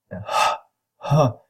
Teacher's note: so it's a voiceless glottal fricative